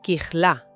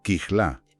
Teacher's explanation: kichla con una j gutural fuerte y el acento en la última sílaba